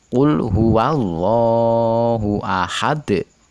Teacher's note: Ahad adalah dal huruf qalqalah kubro yang terletak di akhir ayat. Dipantulkan begitu keras.